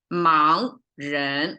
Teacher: Always fully pronounced 盲人, like both are rising tone.